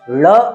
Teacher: ಳ ಅಂತ ಹೇಳಿದಾಗ ನಾಲಿಗೆಯನ್ನು ಮಡಿಸಿ ಉಚ್ಚರಿಸುವಂಥದ್ದು.